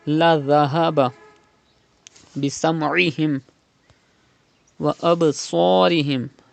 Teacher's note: do qalqala in ba and pronounce sad with thicker voice